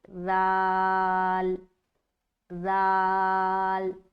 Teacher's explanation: ذال کا مخرج ہے زبان کی نوک اور ثنایا علیہ کا کنارہ